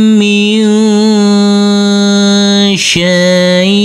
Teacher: huruf nunnya harus Kita baca dengan samar-samar karena ini adalah bacaan ikhfa. Di sini ada bacaan mad lain yaitu huruf syin yang berfathah a bertemu dengan huruf ya sukun.